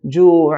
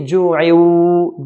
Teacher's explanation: Waw is from the idgham, 6 letter of idgham with ghunna. So we're going to remove the nun sakina, the hidden nun sakina, merge with the waw with the ghunna.